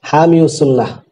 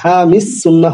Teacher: কাদিউল কুজাত হয় না, কাদিল কুদাতি। এই ইসমে মানকুসের ইয়া উচ্চারণ আসবে না, অতএব হামিস সুন্নাহ হবে, হামিউস সুন্নাহ হবে না।